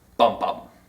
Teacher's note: two accented syllables back to back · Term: spondaic Rhythm